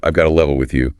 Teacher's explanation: Notice how got to often becomes gotta in casual speech, and the to before a vowel sound can sometimes just melt away.